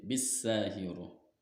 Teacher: Karena huruf alif, nah ini ada huruf alif bertemu huruf syamsiyah sin. Huruf syamsiyahnya sin dibaca idgham masuk ke dalam huruf sin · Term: alif lam syamsiyah